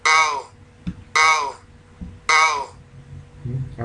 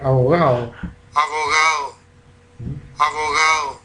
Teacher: puede pasar desde fricativa a aproximante y derechamente en algunos casos a la elisión, que sería el caso aquí de abogado, la última, en la D.